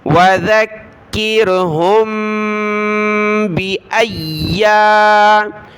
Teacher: میم ساکن کے بعد با ہے تو ناک میں آواز پیدا کریں گے،